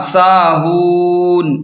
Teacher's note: وقف کی صورت میں نون ساکن ہو جائے گا